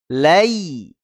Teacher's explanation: Ya Sukun yang didahului oleh fathah ini ya itu cenderung ke kasrah yakni bunyi i bukan ke e bukan wallaili tapi wallai ya dikembalikan kepada kasrah ya Bunyi I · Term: layin